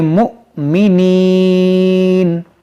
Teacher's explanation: حمزہ ساکنہ ہے, اس کو جھٹکا دے کر پڑھیں گے, اس واو کو نہیں پڑھیں گے, اس کو پڑھیں گے مؤمنین.